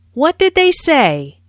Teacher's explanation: notice how say is emphasized but the intonation Falls at the end of the word this is a what question so the intonation Falls at the